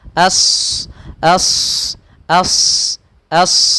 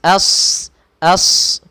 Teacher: Isti'la yaitu terangkatnya pangkal lidah kita, sedangkan idbaq yaitu melekatnya melekatnya lidah kita ke langit-langit sehingga tebal suaranya